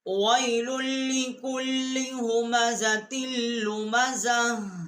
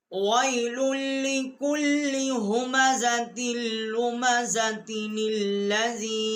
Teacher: وَيْلٌ لِّكُلِّ ہُمَزَةٍ لُمَزَةٍ الَّذِي، تو اس میں پھر یہ ہا جو ہے وقف میں یہاں پر ہا آئے گا، اگر ملا کر پڑھیں گے تو یہ تا پڑھا جائے گا، اس کے نیچے زیر جو ہے وہ پڑھی جائے گی، اور اس کو تل لذی نہیں پڑھیں گے، نل لذی ہم پڑھیں گے، اس کی نون جو ہے یہ یہاں پر اس کی ہے، اس کے ساتھ ملا کر پڑھیں گے۔